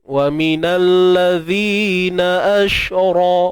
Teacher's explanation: Ra tebal. Sebab apa ra tebal? Sebab baris atas.